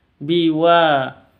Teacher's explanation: wanya panjang 2 harokat karena ada alif diawali dengan fathah.